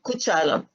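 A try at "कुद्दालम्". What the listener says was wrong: No, This is a double dakara. Kuddalam.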